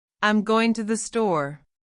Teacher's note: Americans often speak with a downward pitch at the end of a sentence, especially when they're confident or giving information. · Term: Intonation